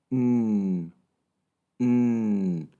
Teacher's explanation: El último sonido es n. Y si tocas tu garganta al mismo tiempo que haces el sonido, te darás cuenta de que sí hay vibración. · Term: voiced sounds